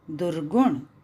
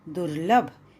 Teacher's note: विसर्ग जो है वो र में परिवर्तित हो गया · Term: विसर्ग का र में परिवर्तित होना